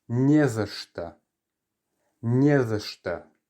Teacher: because we're stressing the first part of it, the не, the end of the word is unstressed, and so the or gets reduced. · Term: reduction